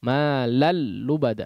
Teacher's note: langsung seolah langsung menjadi tasydid ya, tidak ada nun sukun lagi di situ ya. Nah, makanya idgham itu biasanya sebagaimana dilihat di mushaf itu entah dia yang bentuknya nun sukun ataupun yang tanwin, biasanya huruf berikutnya itu langsung bertasydid.